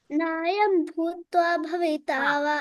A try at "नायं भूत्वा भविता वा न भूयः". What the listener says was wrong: so don't say Nayam Bhutva because Bhu is Dirgha over there. Nayam Bhutva, Bhutva, stretch the Bhu.